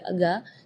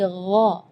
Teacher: Jadi kalau ga itu dia makhrajnya dari lidah. Ya, tapi kalau huruf ghain itu dari bagian tenggorokan